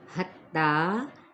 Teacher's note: تا کو ہم چار حرکت کھینچیں گے